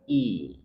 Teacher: Setelahnya hamzah berharakat kasrah. Hamzah dari tengah tenggorokan.